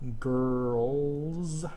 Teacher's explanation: If it's voiced, as in girls, okay, you're gonna say the Z sound.